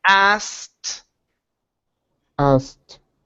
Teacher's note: Okay. So take out the K sound and move straight to the T. So instead of saying asked, it's asked.